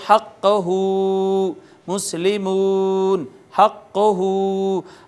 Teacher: واو مدہ کو بھی ہونٹ گول کر کے کھینچا اور الٹا پیش کو بھی اسی طرح ہم نے ہونٹ گول کر کے کھینچا